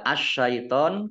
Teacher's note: alif lamnya tidak dibaca, langsung masuk ke huruf shin, ditandai dengan shinnya ada tasdidnya, shinnya dibaca double. Ya. Ini dibaca asyaiton karena di awal, ya, di awal kata. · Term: alif lam syamsiah